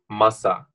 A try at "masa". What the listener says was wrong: So you say like masa. Yeah, again, finish it off the end. Like masa.